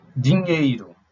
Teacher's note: A última sílaba é ro, a penúltima é nhei e a antepenúltima é di. Então, se a sílaba tônica for a penúltima, como estamos vendo, então dinheiro é uma palavra paroxítona.